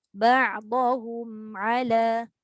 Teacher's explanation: Bagi dia jejak betul-betul mim tu dengan jelas mati. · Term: tawassut